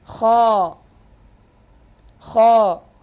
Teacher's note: you pronounce a heavy letter the back portion of your tongue the deepest part of the back portion of the tongue will be elevated so it is ha ha there are totally 7 heavy letters